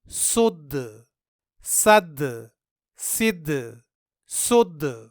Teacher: یہاں ان تینوں جگہوں میں ہم نے حرف دال میں قلقلہ کیا کیونکہ دال حروف قلقلہ میں سے ہے اور یہاں دال ساکن ہے۔